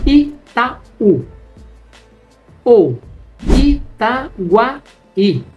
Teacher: Itaú, a separação silábica entre o A e o U, é um hiato.